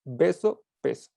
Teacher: Así como el mismo punto de articulación, porque tanto B como P se realizan con ambos labios. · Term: oclusivas bilabiales